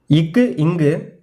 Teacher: நாவின் முதற்பகுதி அன்னத்தின் அடிப்பகுதியை பொருந்துவதால் பிறக்கும் மெய்யெழுத்துக்கள்